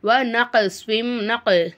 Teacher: நக் அப்படின்னு சொல்லிட்டு கோஃபை அசைச்சி ஓதணும். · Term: கல்கலா